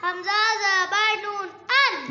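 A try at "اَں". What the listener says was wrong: نہیں نہیں نہیں یہ نون پر غنہ کرنا ہے ان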